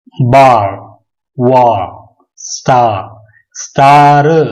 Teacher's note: आर को pronounce नहीं करेंगे बल्कि सॉफ्ट आवाज में अदा करेंगे या वो पहले के वॉवेल के साथ मिक्स हो जाएगी